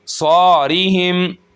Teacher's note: सौ को हम एक अलिफ के बराबर खींचेंगे और मोटा पढ़ेंगे, हरूफ़ मुस्तालिया में से है।